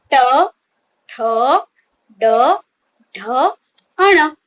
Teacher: બોલતી વખતે જીભ ઉપર દાંતના મૂળ ભાગને અડે છે. જ્યારે આપણે આ વર્ણનો એટલે કે આ વ્યંજનનો ઉચ્ચાર કરીએ છીએ ત્યારે આપણી જે જીભ છે એ દાંતના મૂળ ભાગને અડતી હોય છે. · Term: મૂર્ધન્ય વ્યંજન